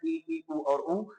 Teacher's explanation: संवृत का मतलब होता है मुख लगभग बंद रहेगा